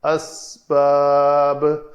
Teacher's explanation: آخر میں با ساکن کیا ہم نے خود، اس کے اوپر قلقلہ کریں گے